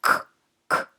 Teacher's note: tiene un punto articulatorio velar en que la oclusión o punto de contacto se produce entre el postdorso y el velo